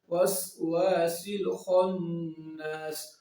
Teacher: سین کو جب ہم پڑھیں گے تو اس کی ساؤنڈ سیٹی کی آئے گی